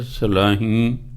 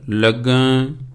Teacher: ਇਹ ਸਲਾਹੀ ਜਿਹੜਾ ਸ਼ਬਦ ਹੈ ਇਹ ਕਿਰਿਆ ਹੈ, ਇਸ ਲਈ ਨੱਕ ਰਾਹੀਂ ਬੋਲਣਾ ਸਲਾਹੀ। ਲੱਗਾ ਨੂੰ ਵੀ ਕਿਰਿਆ, ਨੱਕ ਰਾਹੀਂ ਲੱਗਾ, ਇਸ ਤਰ੍ਹਾਂ।